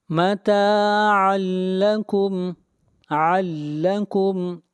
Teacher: تنوین کے بعد حروف یرملون میں سے لام ہے، یہاں پر ادغام بلا غنہ ہوگا